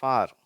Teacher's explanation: முதல் ஓசை இது ஆ அப்படின்னு சொல்லிட்டு இதற்கு உதாரண வார்த்தை ஃபார் சரியா இப்படி ஆ அப்படின்னு சொல்லும்போது உதடுகள் பரவலா இருக்கும்